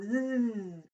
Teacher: If it's the z sound, I'll put my hand on my throat and go zzz. I feel a vibration in the throat, so that means it's voiced.